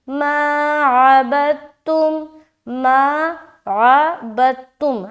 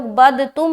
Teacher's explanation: سکون والا جو لیٹر ہے اس کو اسکپ کرنا ہے، پیچھے والے حرف کو شد میں ملانا ہے. جیسے کہ یہاں با ہے نا تو با دال سے تا سے ملے گا، دال کو اسکپ کریں گے.